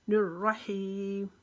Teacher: یہ را بھی موٹی پڑھی جائے گی کیونکہ اس کے اوپر زبر ہے اور تشدید کی وجہ سے یہاں پر پہلے تھوڑی رکاوٹ کریں گے۔ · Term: را موٹی